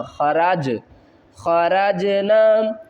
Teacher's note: جیم کو ہلا کر پڑھیں گے، حروف قلقلہ ہے، قلقلہ کا مطلب کیا ہوتا ہے؟ ہلانا